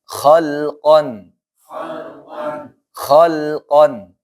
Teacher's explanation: Di sini lamnya tidak tebal dan juga tidak mantul, jangan khalqan misalkan.